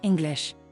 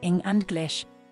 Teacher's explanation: the vowel in the first syllable, ing, is louder, longer, and at a higher pitch than the vowel in the second syllable, glish. So the first syllable is stressed, and the second syllable is unstressed. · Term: primary word stress